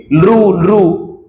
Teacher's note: दंत्य स्थानापासून उच्चारले जाणारे स्वर, जसं की लृ लृ, इथं जीभ दाताला लागते आणि मगच हा उच्चार होतो